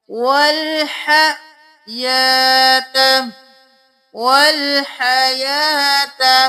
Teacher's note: ہا کو بالکل گلے کے درمیان سے صاف آواز میں، یا کے اوپر کھڑی زبر ہے الف کے برابر کھینچے.